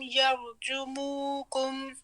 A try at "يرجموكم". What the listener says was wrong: نہیں، یر کر کے نہیں پڑھنا، یرجموکم یرجموکم